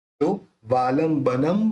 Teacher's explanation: भ बोलते समय दोनों होठ मिल जाते हैं तो फिर इस न के ऊपर जो बिंदी है उसका उच्चारण अपन करेंगे म